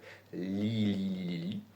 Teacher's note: J'ai le corps de langue qui est bien haut et le bout de la langue qui vient effleurer entre les dents et la bosse du palais juste derrière les dents.